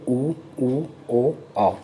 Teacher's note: ये आपके होंठ गोलाकार हो जाते हैं, सामने आके गोल राउंड शेप में मुड़ जाते हैं, तो इसको बोलते हैं वृत्तमुखी स्वर।